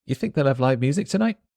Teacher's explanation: Tonight, the T stops in my throat.